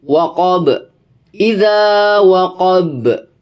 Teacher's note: Qalqalah kubro. Dibaca memantul dengan kuat karena huruf ba-nya itu dimatikan oleh tanda waqaf atau sukun.